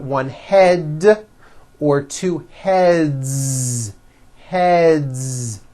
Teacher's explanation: now the word head ends with a voiced d